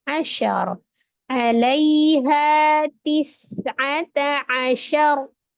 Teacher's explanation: Tis'ata asyar, ro-nya kembali disukunkan dan ditebalkan karena sebelumnya fathah